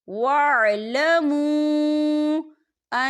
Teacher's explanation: واو مدہ بھی ہو رہا ہے اور اس پر مد بھی ہے، تو ہم اسے 4 حرکت کے برابر کھینچ کے پڑھیں گے